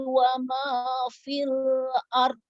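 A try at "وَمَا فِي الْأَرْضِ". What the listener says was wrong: Dok-nya sedikit lagi. Wa ma fil ard. Ke huruf R dulu, baru ke huruf do. Fil ard. Oh, jangan dipantulkan do-nya. Fil ard. Jangan dipantulkan do-nya ya. Wa ma fil ard.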